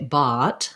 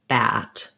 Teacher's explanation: say them more with an ah vowel they sound more british that way the ah vowel is further back so i don't really want to say bot but rather bat